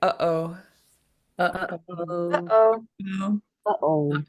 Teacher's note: The way you stopped your air in the middle of uh-oh is a glottal stop.